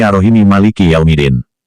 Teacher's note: Kalau dibaca ishar, kedua huruf mim dibaca dengan jelas